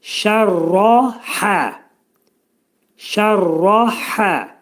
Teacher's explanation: Şərrahə, şərrahə. Burada şin və hə hərfləri ə şəklində oxunacaq. Ra'nın üstündəki bu fəthə isə qalın oxunacaq